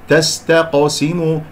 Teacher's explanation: القاف ساكنة مقلقلة قلقلة صغرى لأن في وسط الكلام ، لكن لا أنسى التفخيم، لا أقول تستقسموا تستقسموا، هذه قاف